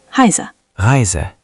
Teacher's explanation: For the R, don't do a strong American R. Make it softer and farther back.